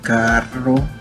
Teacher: La letra doble R, como en la palabra carro, se pronuncia de manera fuerte, haciendo que la lengua vibre contra el paladar